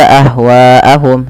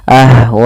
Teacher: Maka harus panjang wa-nya 4 harokat atau 5, tidak boleh 2. Tidak boleh dibaca ahwaahum, tapi harus baca 4 ahwaahum. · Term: mad wajib muttasil